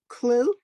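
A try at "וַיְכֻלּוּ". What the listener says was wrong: No, it's a chaf. Vayechulu.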